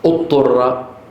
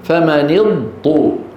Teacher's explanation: الضاد لا تدغم في الطاء اقوى منها